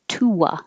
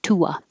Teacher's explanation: There's an invisible W when your lips go from rounded to the unrounded